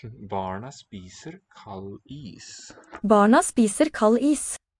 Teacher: The D is dropped in that cluster.